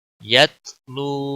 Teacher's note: یا تا زبر یت، لام واو پیش لو، یت لو، الف کو پڑھنا ضروری نہیں ہے. یت لو، واو مدہ ہے، ایک الف کے برابر کھینچنا ہوگا. واو ساکن سے پہلے جب پیش ہو تو ایک الف کے برابر اس کو لمبا کرتے ہیں.